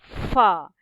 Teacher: gigi atas berada di bibir bawah Va dan mesti berangin